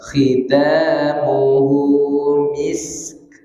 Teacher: Jadi alirkan sinnya baru masuk ke kaf.